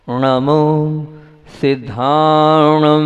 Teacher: नाक से तो निकला लेकिन जीभ को पीछे करके णा का उच्चारण किया है